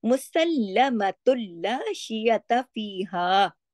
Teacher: سین لام پہ تشدید ہے، سختی سے جوڑ کے پڑھنا ہے. لام کی آواز 2 دفعہ آنی چاہیے